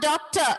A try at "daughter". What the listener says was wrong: No, no, no. Yes, pronunciation is different. It is not K sound. It is daw.